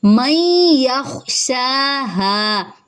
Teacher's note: نون ساکن کے بعد یا ہے، یہاں پہ ادغام مع الغنہ ہو رہا ہے، یا خوابر ہے، شا ایک الف کے برابر لمبا، ہا ایک الف کے برابر لمبا، ٹھیک ہے۔